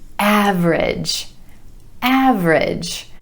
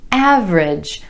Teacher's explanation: with emphasis on the first syllable and the vowel sound ah